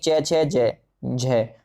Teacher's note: हिंदी की तालव्य ध्वनियां हैं च, छ, ज और झंडा वाला झ